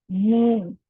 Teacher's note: میم بھی ہونٹوں سے ادا ہوتا ہے. میم میں جو ہمارے ہونٹوں کا خشک حصہ ہے وہ جب آپس میں ملتا ہے اور پھر جدا ہوتا ہے تو میم ادا ہوتا ہے